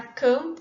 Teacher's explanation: o ponto de articulação do mã é o mesmo ponto de articulação do pã, é bilabial